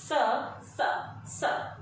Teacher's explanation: ये स जो है ये दंत से उच्चारित किया जाता है।